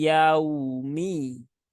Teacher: waw sukun itu adalah bunyinya dhammah ya, u bukan o.